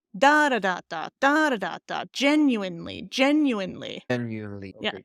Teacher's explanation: So there's four syllables there. First one is stressed.